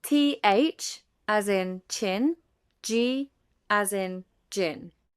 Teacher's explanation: Affricates are produced by a complete closure, followed by a slow release, combining a plosive and a fricative.